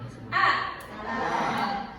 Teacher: Maka ketika pengucapan A, lidahnya hanya ditahan di tengah menjadi A.